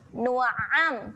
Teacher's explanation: Man nu'am hati-hati makhraj huruf ain, jaga. Makhraj huruf ain dia kena tekan di tengah kerongkong. Nu'am. Tekan sikit kat tengah kerongkong tu.